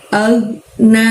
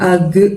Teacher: agnya jangan sampai mantul suaranya ya, ditahan ya.